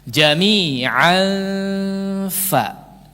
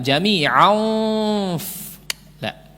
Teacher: Fa termasuk daripada huruf isti'la bukan? Bukan sehingga jangan ditebalkan